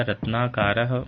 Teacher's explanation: रत्न plus आकार, इसमें रत्न का अ और आकार का आ, दोनों स्वर मिलकर के दीर्घ आ का निर्माण करेंगे